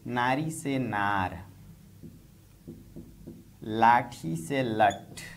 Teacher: खड़ी बोली में शब्द के अंत में आने वाली ई स्वर ध्वनि अ की तरह परिवर्तित हुई